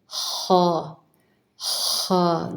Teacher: خا خا گلے میں تھوڑی سی جیسے خراش سی ہو